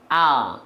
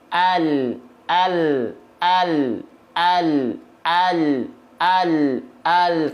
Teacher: Kalau huruf L, ya, kalau huruf L yang di sini, yang atas, L alfabet itu dilafalkan hanya menyentuhkan ujung lidahnya saja.